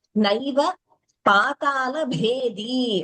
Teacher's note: Only Bha is Mahaprana there. · Only भ इस महाप्राण there द is अल्पप्राण वी should not interchange